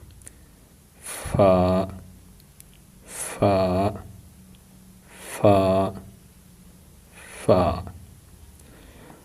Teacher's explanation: سامنے والے اوپر کے 2 دانتوں کا سرا نیچے والے ہونٹ کے اندرونی حصہ سے لگے تو اس سے فا ادا ہوتا ہے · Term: مخرج نمبر 15